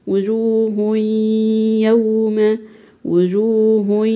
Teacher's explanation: ما نطقتش تنوين وده اسمه ادغام ناقص بغنه يعني دخلي التنوين في حرف الياء ويطلبولنا في حرف الياء يوم